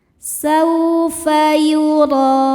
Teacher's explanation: Huruf ro dibaca tafkhim karena harakatnya di atas. Cara bacanya ditebalkan.